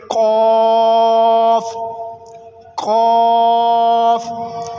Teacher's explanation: कौफ भी हरूफ मुस्तअलिया में से है तो इसको भी इंशाल्लाह हम दूसरे हरूफों की तरह पुर पढ़ेंगे।